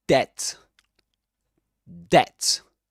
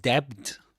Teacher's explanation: not debted. You don't pronounce the B. You don't pronounce that letter, that sound.